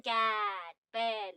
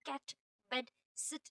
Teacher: your tongue and mouth stay in one position. The sound is steady and does not move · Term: monofongs